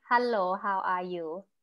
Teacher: in thai language the sentence is more monotone